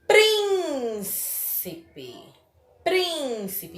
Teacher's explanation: Então, prim é a antepenúltima sílaba mais forte.